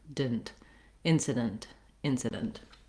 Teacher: you just want to be short on it go almost directly from the d right to the n · you can think of it as being very short and reduced like didn't rather than dent with a true e vowel you just want to be short on it go almost directly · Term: reduced vowel